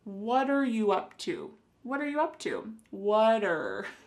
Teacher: the word what and are creating a spoken contraction